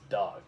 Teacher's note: it's nice and short because it's cut off by a consonant of the G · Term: closed